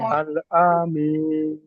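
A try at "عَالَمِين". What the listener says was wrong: আল্লাহ আমিন হবে না। আইন খাড়া যাবে, লাম জবর লা। আলা মিন। লাম আলিফ লাম জবর লা আছে, লাম আলিফ নেই জি।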